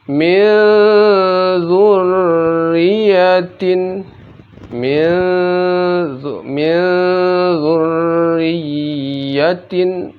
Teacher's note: Apabila nun mati atau tanwin bertemu zal maka dibaca samar dan didengungkan.